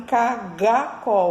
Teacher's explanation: ao invés de falar caracol, fazem cagacol com a parte de cima e de trás da língua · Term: distorção